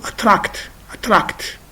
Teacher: is the phonemic transcription of attract as you see and attract so the second syllable is stressed this is a verb